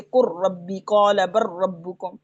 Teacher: आपने लाम नहीं पढ़ना इसमें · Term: लाम का रॉ में